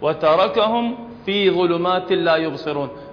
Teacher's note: الميم بعدها فاء أيضا تكون أشد إظهارا